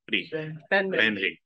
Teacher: Japanese doesn’t have [ɹ]. Japanese has a flap that is [ɾ]. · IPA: [bɛnɾi]